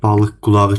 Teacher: bu balıq qulağı sözü tələffüzdə K kimi deyil, X kimi oxunur. Bax, bu Q çevrilir X-ya.